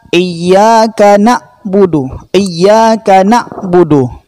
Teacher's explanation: Huruf ain yang disukun seperti tertahan.